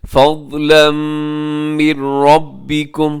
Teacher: فضلا پہ تنوین ہے، تنوین کے بعد میم ہے، یعنی یہاں پہ ادغام یرملون ہے غنے کے ساتھ